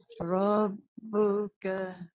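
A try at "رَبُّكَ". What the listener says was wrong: Ringan lagi. Sebab tak ada bunyi tu. Bunyi idlaq tu dia tak ada.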